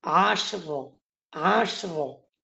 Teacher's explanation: এই শিনের মধ্যে কিন্তু কলকলা নাই